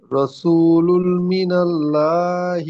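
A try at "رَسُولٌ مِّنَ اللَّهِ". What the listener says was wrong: রসুলুম, রসুলুম। লুম গুন্না হবে, মিম মুসাদ্দাদ একালিপ পরিমাণ গুন্না। আর আরেকটি হলো তানবিনের পরে লামের উপরে দুপেশ, তানবিনের পরে ইউমিনের চারটি হরফের মধ্যে মিম এসেছে, তাই একে ইদগামে নাকিস বলা হয়।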